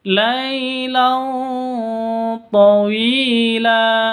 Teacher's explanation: Tanwin bertemu dengan to, cara bacanya samar didengungkan, siap-siap ke huruf to karena ikhfa hakiki.